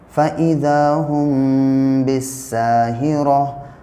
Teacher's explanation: मीम साकिन के बाद जब बा आएगा तो मीम को इख़्फ़ा और गुन्ना के साथ पढ़ेंगे।